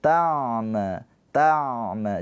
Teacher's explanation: Ingat ain mempunyai sifat tawas. Ada aliran suara sedikit. · Jangan tertahan karena dia bukan siddah. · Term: tawassut